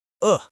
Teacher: Good has the short vowel uh. Your lips are relaxed and barely round.